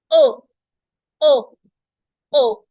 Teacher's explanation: The sound is O. Your mouth should make a round shape, not exactly round, spherical.